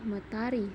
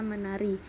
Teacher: disenyawakan dengan bunyi nasal yang homorgan